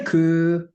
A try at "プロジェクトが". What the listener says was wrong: Okay, longer. Ku. Now, don't say u.